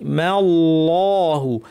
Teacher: মাল্লাহু মিম পাতলা, আল্লাহের লামটা ভারী, মাল্লাহু। ওয়ামাল্লাহু বিগাইনের আওয়াজটা সফট হবে, বাতাস বন্ধ, গয়ের মতো শক্ত হবে না, বিগাফিলিন নয়, বিগাফিলিন।